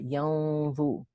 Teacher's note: Dha is a heavy letter. You hide the noon into the dha. It's إخفاء حقيقي, but the ghunna must be heavy because dha is a heavy letter. ينظو. Dha itself has a dhamma, so it's heavy on the third scale.